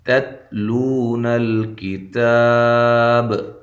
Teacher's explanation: یہ جو تا کو تا سے ملایا جا رہا ہے، اس تا کو ہلانا نہیں ہے، دونوں تاؤں کو باریک پڑھنا ہے